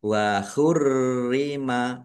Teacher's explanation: rnya ada tasdidnya dibaca dobel ditekan dan ditahan biar tampak dobel